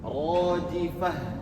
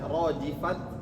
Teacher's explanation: Atau rojifah tipis. Ta marbutah ini kalau di akhir diwakafkan maka bunyinya seperti ha besar